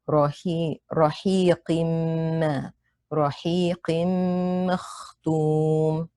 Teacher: Meme has a shadda as a result of the merging that takes place between the tanween and the meme. Make sure you hold the ghunna for 2 counts. · Kha has a sukun. It's preceded by a letter with fatha, so it's heavy on the 2nd scale. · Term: idgham bi ghunna